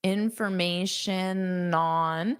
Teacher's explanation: So you can add this N to on.